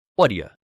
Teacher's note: The what do you mashes together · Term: connected speech